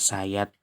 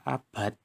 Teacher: T pada kata sayat termasuk konsonan apikoalveolar tidak bersuara, sedangkan D pada kata abad termasuk apikoalveolar bersuara